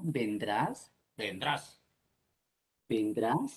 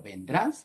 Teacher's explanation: la entonación también es un fonema suprasegmental, porque no significa lo mismo vendrás, vendrás, vendrás, estás preguntando, pero vendrás, estás ordenando